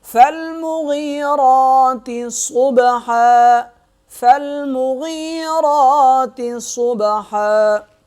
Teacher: صاد کو موٹا پڑھیں گے، با پہ کریں گے قلقلہ